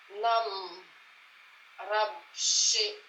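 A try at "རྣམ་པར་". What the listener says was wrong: Ah, par. Non pas Rabche, mais Parche.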